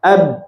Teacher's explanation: sukun itu tadi dirapatkan atau ditempelkan dua makhrajnya ya Antara dua bibir atas bibir bawah ditempelkan ab jadi ba huruf Sin coba [Musik] As ya ditabrakkan atau